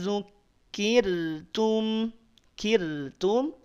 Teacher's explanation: ro sukun sebelumnya ada kasrah maka r-nya tipis